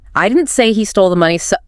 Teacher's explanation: put all the stress on the word I.